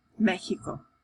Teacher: X has two different sounds. So sometimes it sounds like an H, like in the word Mexico